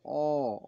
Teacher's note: তারপরে উঁচু হয় তবে সে উঁচুটা কোন দিকে হয় জীবের পেছনে অ বলতে জীবের পেছন থেকে চাপ আসে তখন অ এর পেছনটা উঁচু হয়